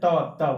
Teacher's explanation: त बोलने पर जीवा जो है दांत से टच हो रहा है